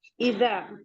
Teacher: اذا حمزہ حلقی ہے، زال اس کو اس کے مخرج سے ادا کرنا ہے، ہمیں زال کہنا ہے، جو ہماری ٹپ آف دا ٹنگ ہے وہ فرنٹ ٹیتھ کے کنارے سے لگے گی۔ اذا الف مدہ ہے، 2 کاؤنٹ پڑھیں گے۔